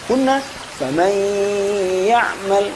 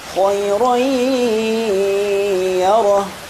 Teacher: Ketika kita membaca faman ya'mal, ini idgham saja tanpa gunnah. Namun kita datangkan gunnah faman ya'mal sehingga dipanjangkan selama 2 harokat lebih sedikit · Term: idgham bi gunnah